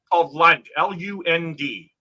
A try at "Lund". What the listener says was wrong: Sounds like you're saying lung. I'm like, why are you saying lung?